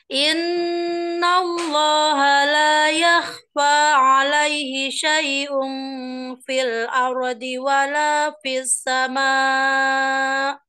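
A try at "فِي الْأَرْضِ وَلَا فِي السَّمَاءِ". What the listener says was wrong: Ada lagi, fis. Ada tasjid kan, fis. Jangan langsung buru-buru. Sempurnakan.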